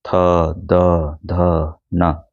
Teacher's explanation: द ध न ये दांत की सहायता से बोले जाते हैं